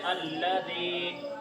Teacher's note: یا مدہ کو ایک الف کے برابر کھینچ کے پڑھتے ہیں